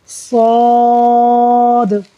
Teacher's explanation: صاد جو ہے یہ حروف مستعلیہ میں سے ہے، پر پڑھا جائے گا، منہ بھر کر آواز آئے گی